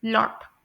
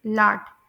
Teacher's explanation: आपने यह बात याद रखनी है कि अमेरिका में मोस्टली मोस्टली ओ को लॉन्ग आ की साउंड के तौर पर प्रोनाउंस किया जाता है